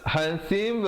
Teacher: ada qalqalah sughra di situ. Berikan pantulan pada ba yang bertanda mati.